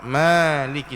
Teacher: Maliki dibaca dengan panjang 2 harakat saja. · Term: mad asli